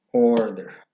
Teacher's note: El acento lo lleva sobre la primera sílaba.